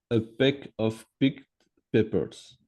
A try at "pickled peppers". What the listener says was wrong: là, c'est pickled, parce que tu as un L, hein.